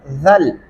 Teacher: زال کو نرمی سے ادا کریں گے، زل زا کی جگہ سے ادا نہیں کرنا ورنہ آپ زا لگا دیں گے، زال لکھا ہوا ہے، زال پڑھتے ہوئے آپ زبان کی نوک جو ہے وہ دانتوں کے نیچے لائیں گے تو نرمی سے ادا ہو جائے گا، زل۔